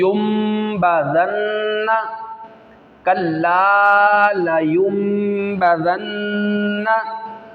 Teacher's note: हमने इसको युन नहीं पढ़ा बल्कि युम पढ़ा। युम इसलिए पढ़ा है, नून साकिन के बाद, यानी जिस नून पर या तनवीन के बाद, सही है, जिस नून पर जज़म आ जाए उसे नून साकिन कहते हैं, या तनवीन 2 ज़बर हों, 2 ज़ेर हों या 2 पेश हों, उसके बाद अगर बा आ जाए तो वहाँ पर इकलाब होता है।